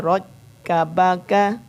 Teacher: रा की आवाज़ शुरू में मोटी हो, फिर जब रा काफ के ऊपर पहुँचे फिर बारीक हो जाए आवाज़